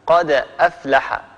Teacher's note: طيب نأخذ مثالا على حرف القلقلة وسط الكلام، مثل قد أفلح المؤمنون، قد دال ساكنة حرف قلقلة بعدها همز قد أفلح، بعد أن ننطق هذه الدال فإن الفم يتهيأ على مخرج حرف الهمزة، لذلك تكون القلقلة أقل وضوحا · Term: القلقلة الصغرى